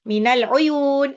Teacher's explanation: minal uyun alif lam qamariyah alif lam yang dibaca jelas